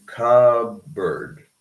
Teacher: We do not pronounce the P. We just go directly into cupboard. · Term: elision